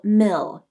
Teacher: Start by saying the first syllable, mill, and hold out the dark L. Your tongue tip can come up to the roof of the mouth like this, mill, or it might push against the back of the bottom teeth like this, mill.